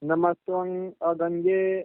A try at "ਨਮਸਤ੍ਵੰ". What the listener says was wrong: ਤਵੰਗ ਨਹੀਂ ਪੜ੍ਨਾ ਤਤੇ ਔਂਕੜ ਅੇ ਟਿਪੇ ਤੁਅੰਗ ਹੀ ਪੜ੍ਨਾ